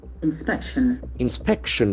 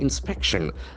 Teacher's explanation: The accent falls on the second syllable.